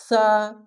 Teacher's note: সা উচ্চারণটি উচ্চারণ করতে গেলে নরম করে হবে। সা, হালকা জিহ্বা বের করে হবে।